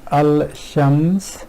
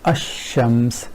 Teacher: lam is not pronounced and you go right from hamza to shin · rather than saying al-shams this which is a bit hard on tongue they ignore that and pronounce this ashams which is much more fluent way of pronouncing this word · So ignoring this, in a way what they're doing is, either we can say they convert lam to sheen, or because lam is ignored, so sheen is pronounced twice. Whichever way we look at it, the point is that lam is not pronounced and you go right from hamza to sheen and the flow is much better.